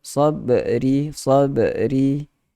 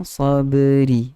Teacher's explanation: Kalau qalqalah berada di pertengahan, kita sebut sebagai sughra. So dia tidak ada lantunan detakkan yang kuat.